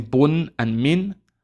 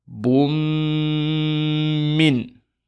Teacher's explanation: We will just merge it to the Meem and pronounce a Ghunna for 2 counts.